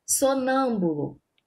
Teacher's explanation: a sílaba tônica, a sílaba mais forte do sonâmbulo é o nã. E se encontra na antepenúltimo, né?